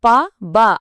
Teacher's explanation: క గ అన్నప్పుడు ఆ శబ్దం గొంతు లోపల నుంచే వస్తుంది గమనించారా ఇప్పుడు ప బ అని చెప్పండి. పెదవులు కలవకుండా చెప్పలేం.